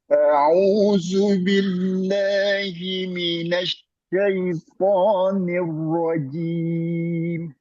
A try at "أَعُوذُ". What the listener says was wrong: Ya, jangan zu. A'udzu.